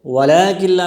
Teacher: هم المفسدون ولكن لا يشعرون، ولكن لا میں لام کڑا زبر ہے، اس کو ایک الف کی مقدار کھینچ کر پڑھیں گے، اور ولكن لا یہاں نون نہیں پڑھی جائے گی، اس لیے کہ یہ ادغام تام ہے، اس میں غنہ نہیں ہوگا